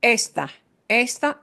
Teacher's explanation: right they're not pronounced the same because the emphasis is different esta punches the beginning vowel sound esta right that a part is is what gets the punch